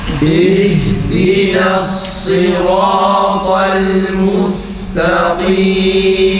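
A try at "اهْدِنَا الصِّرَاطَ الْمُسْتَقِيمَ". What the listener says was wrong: Dikkat edin. Mus secdesine dikkat edelim. O çıkmasın.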